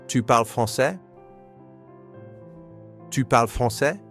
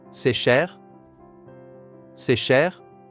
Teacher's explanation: use rising intonation with statement word order